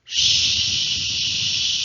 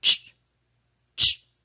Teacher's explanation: the SH sound is continuous versus the CH sound cannot be held. For example, when I'm trying to pronounce the SH sound, I can hold it for a long period of time.